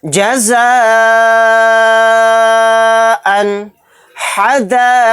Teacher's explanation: اس مد کو ہم 4 الف کی مقدار کھینچ کر پڑھیں گے۔ جزاءً حدائق، تو یہاں پر دیکھیے دال کو الف کے ساتھ ہم نے کھینچا، بہت زیادہ کھینچا۔ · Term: مد متصل